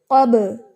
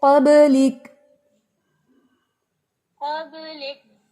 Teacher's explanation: جب بھی با کے اوپر جزم آتی ہے تو با کیا کرتا ہے؟ ایکو دیتا ہے